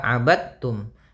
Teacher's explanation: Kemudian da langsung ketika bertemu dengan ta, da-nya dia sukun ketemu dengan ta, maka langsung diidghamkan. Da-nya tidak lagi dipantulkan, tapi langsung ditasydidkan ke ta